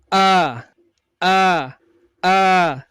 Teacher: Jadi pangkal tenggorokan kita kalau dari luar kita pegangi maka akan bergetar ketika kita mengucapkan huruf hamzah.